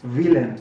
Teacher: Villain, no, villain, además con una V dentilabial, no una V chica, villain, ¿no?